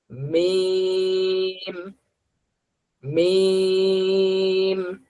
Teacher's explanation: মিম উচ্চারণ করার সময় জিহ্বার কোনো কাজ নেই, শুধু দুই ঠোঁট মিলবে। মিম মানে মিম উচ্চারণ করার সময় দুই ঠোঁট মিলিত অবস্থায় উচ্চারণটা শুরু হবে।